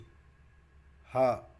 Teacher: हा जो है वह कंठे भी है और महाप्राण भी है और घोष वर्ण भी है